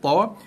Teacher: makhrajnya ataupun rumahnya ataupun permulaan sebutannya mestilah melibatkan pergerakan lidah, hujung lidah menyentuh belakang gigi atas. Hujung lidah menyentuh belakang gigi atas. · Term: huruf to